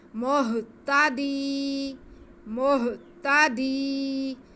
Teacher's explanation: دال کی آواز کو ہم ایک الف کے برابر کھینچیں گے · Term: یا مدہ